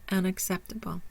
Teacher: Primary stress is on the third syllable, sept.